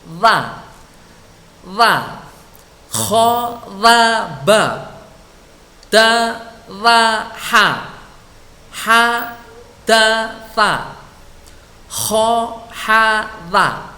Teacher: Ini yang sering salah kaprah, ini bacanya dha. Dha ujung lidah mengenai ujung gigi seri yang atas. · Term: huruf dha